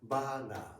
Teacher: we have no schwa sound. Like we is always pronounced as very clearly.